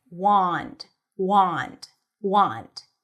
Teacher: And then wand, even though it has an A, it's an ah sound.